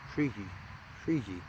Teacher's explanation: Usually when it's chanted, it ends up feeling like two syllables almost.